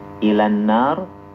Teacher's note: Jadi alnya mudgam. Mudgham itu artinya melebur ya. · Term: idgham syamsi